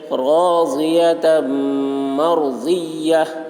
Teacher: را ساکن سے پہلے زبر ہے، اس لیے را کو پر پڑھیں گے